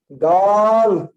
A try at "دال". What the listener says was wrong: نہ اور لمبا پڑھیے.